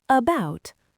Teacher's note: Because the first syllable is unstressed, that letter A turns into a lazy schwa